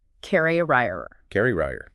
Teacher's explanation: But for carrier, like someone who carries something, the stress jumps to the front